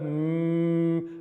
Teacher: And we'll move now to the bilabial voiced nasal sound of mm. See, we've got our lips together, mm, and it feels very resonant in the mask. Mm.